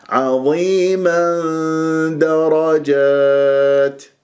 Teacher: فتح، وإذا استمريت راح يكون عندي تنوين فتح جاء بعدها دال، وهنا إخفاء عظيما. إلى وين أروح؟ أروح إلى مخرج الدال، حيز الدال